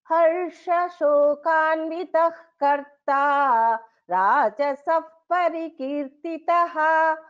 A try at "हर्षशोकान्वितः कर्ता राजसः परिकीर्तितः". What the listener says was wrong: उत्तमं भगिनी,